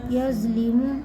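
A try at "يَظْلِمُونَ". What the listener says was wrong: زو نہیں یظ لیمو زبان باہر. یظ لیمو یظ لم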